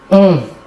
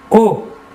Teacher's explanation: pour le O, qui n'est pas nasal, vous ne sentirez pas d'air passer sur votre doigt. O. L'air sortira entièrement par la bouche.